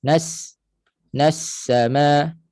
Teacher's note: sin kuat sikitlah bunyi. Dia ada sifat hams, dia ada sifat safir. Sifat safir, sifat yang kuat.